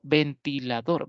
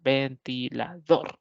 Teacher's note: Es una palabra polisílaba, pero aguda, ya que la mayor fuerza de voz la tiene la última sílaba.